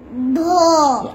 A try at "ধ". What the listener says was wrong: আস্তে বললে হবে না, এটা বলতে হবে চাপ দিয়ে, ধ। হ্যাঁ, ধ